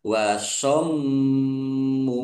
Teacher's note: mim tasdid bacaan gunnah atau mendengung, ditahan biar tampak mendengungnya